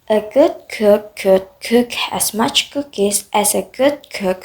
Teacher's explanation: In this tongue twister, the consonants k and g are practiced. K is a voiceless velar plosive, produced at the back of the tongue against the soft palate without vocal cord vibration. And g is a voiced velar plosive, produced in the same place but with vocal cord vibration.